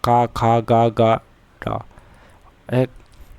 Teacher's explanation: तो का वर्ग कंठ से स्टार्ट होता है